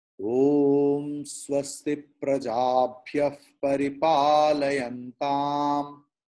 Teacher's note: Visarga's pronunciation has been changed into Fakara because Visarga is following Pa, P.